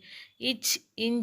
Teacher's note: இச் இஞ்ச் அப்படிங்கிறது வளைநா ஒளிகள்